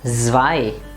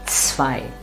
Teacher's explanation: It is not zwei. It is ts, zwei. It's a nice sharp sound. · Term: ts sound